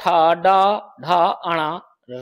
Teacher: ये सभी मूर्धा से बोले जाते हैं